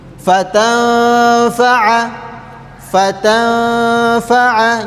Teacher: Jadi tidak boleh fatanfaahu. Harus didengungkan dua harakat